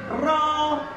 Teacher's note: 10 নম্বর মাখরাজ জিহ্বার আগার পিঠ তার বরাবর উপরে তালুর সঙ্গে লাগিয়ে র।